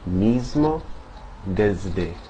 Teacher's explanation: before certain consonants, such as M and D, the S can have more of a Z-like sound